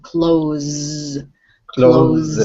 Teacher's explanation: now when you say that s it's like a z sound